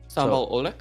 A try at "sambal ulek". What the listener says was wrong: Yeah, so you actually pronounce the O and E together as U. So it's U. It's like a U. Ulek.